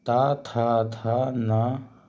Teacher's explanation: ये दांतों का स्पर्श करते हैं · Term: त वर्ग